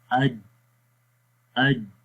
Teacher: جب ہم حمزہ کو جیم کے ساتھ ملاتے ہیں تو کیا ہوتا ہے کہ سانس بند ہو جاتا ہے۔ ہم پڑھتے ہیں حمزہ جیم زبر اج اج، ٹھیک ہے، اور سانس کیا ہو رہا ہے، یہ بند ہو رہا ہے۔